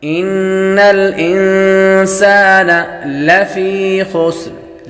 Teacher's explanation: پر ہمیشہ غنہ ہوتا ہے انسان یہاں پر بھی غنہ ہوگا نون ساکن کے بعد سین حروف اخفاء میں سے آ رہی ہے تو غنہ کریں گے